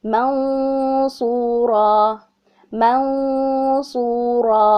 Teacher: حرف صاد ہیوی ہے تو میں نے دیکھتے ہی پہچان لی، یہاں پر اخفا تو ہوگا لیکن ود ہیوی غنہ ہوگا. ٹھیک ہے، یعنی ہیوی ساؤنڈ ہوگی